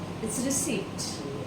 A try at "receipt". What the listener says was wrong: Wrong. wrong. Receipt. P is silent.